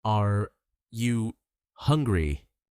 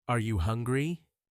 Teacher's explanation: Notice the rising tone at the end.